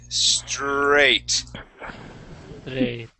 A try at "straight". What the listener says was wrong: oh lost it there at the tail end one more time one last time we're gonna say straight okay hold that R just a little bit